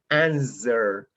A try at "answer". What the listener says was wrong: pronunciation for answer, answer. The W is not pronounced, not pronounced. It's not answer. It's mispronounced. don't pronounce the W. So it's like connecting answer, answer. This is the correct pronunciation.